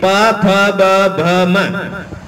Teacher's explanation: प फ ब भ म, इन सभी के अंदर दोनों ओष्ठ काम आते हैं